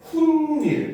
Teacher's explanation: 뒷말의 첫 소리 모음 앞에서 니은 소리가 덧나는 거